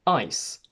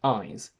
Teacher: In English, the difference between the voiceless s and voiced z is phonemic because we get ice and eyes